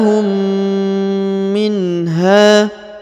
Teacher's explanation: huruf mim bertemu dengan huruf mim maka ditahan dan ditekan didengungkan dua harakat